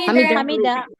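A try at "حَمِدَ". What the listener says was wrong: টান হবে না টান হবে না হামিদা হামিদা হামিদা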